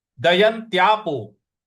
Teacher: य के बाद जो आधा न है उस पर हमको आघात देना है